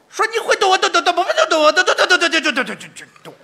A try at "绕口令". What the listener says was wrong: 你 骑 摩 托 车 呢 是 怎 么 着 ？ 就 嘟 嘟 嘟 嘟 嘟 嘟 嘟 。 快 ， 你 得 说 清 楚 了 啊 ， 一 个 字 儿 一 个 字 儿 的 呀 。 哎 ， 不 像 那 么 快 。 一 个 字 儿 一 字 儿